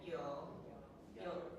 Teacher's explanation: You see, yo, that cut off. Okay, glottal stop.